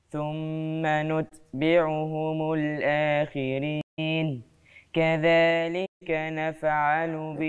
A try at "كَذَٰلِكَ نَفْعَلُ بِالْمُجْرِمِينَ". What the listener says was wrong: انتوا كلكم النهارده بتقلقلوا نفعلوا، زعلان انا من الموضوع ده.